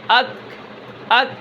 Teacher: اب اس کے بعد جو کاف ہے اس کے اندر ہمس ہے، اک، ٹھیک ہے؟ اک، اک تھوڑا سا سانس جاری رہتا ہے اور آواز کے اندر کیا ہوتی ہے؟ بلندی نہیں ہوتی، یعنی پستی ہوتی ہے